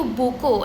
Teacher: ini merupakan letupan bersuara